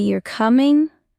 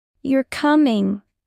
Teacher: You're coming, with rising intonation equals, it's a question. You're coming, with falling intonation equals, it's a statement.